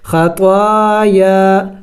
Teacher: خطایا دونوں کو لمبا کریں گے کھینچیں گے ایک الف کے مقدار